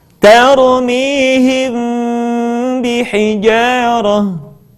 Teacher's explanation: Mim mati ketika bertemu dengan huruf ba, bibir tidak sempurna rapat, melainkan agak direnggangkan sedikit.